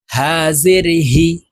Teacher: ছোট হা হলকের শুরু থেকে উচ্চারণ করব